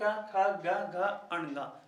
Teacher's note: इनकी जो ध्वनि है ना, जो गले के अंदर का जो भाग होता है कंठ, उससे निकलती है। अर्थात इन व्यंजनों को क्या नाम दिया गया है, उनको नाम दिया गया है कंठीय व्यंजन।